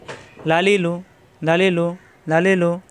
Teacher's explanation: লাম, লাম যাবর লা, লাম জেরলি, লাম পেশলু, লালিলু, লালিলু। জিব্বার আগার কিনারা উপরের দাঁতের গোড়ায় লাগবে, অর্থাৎ মাটিতে লাগবে।